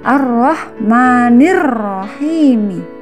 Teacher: Jadi dari nir langsung ke ro. Alif lamnya tidak dibaca. Ciri-cirinya idgham syamsiah, ada tanda syiddah atau tasydid.